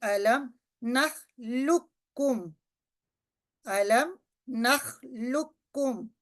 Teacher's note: یہ جو پہلے والا کاف جو کہ ساکن ہے یہ لکھنے میں تو رہے گا لیکن ہم اس کو پڑھیں گے نہیں، یہ پچھلے والے لیٹر کو، پچھلے والے حرف کو ہم اگلے سے ملائیں گے. · دو ڈاٹس والا جو قوف ہوتا ہے یہ مفخم ہے، یعنی اس کو بھاری آواز سے پڑھتے ہیں